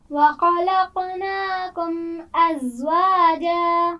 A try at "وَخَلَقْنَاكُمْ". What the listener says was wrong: خا کے مخرج کو واضح کیجیے. وَخَلَقْنَاكُمْ.